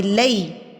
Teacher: یا ساکن سے پہلے اگر زبر آ جائے تو اس کو ہم یا لین کہتے ہیں، اور اس کو ہم نے کھینچنا نہیں ہوتا، اس کو ہم نے لئی پڑھنا ہوتا ہے.